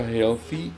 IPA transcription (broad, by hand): ˈhɛlθiː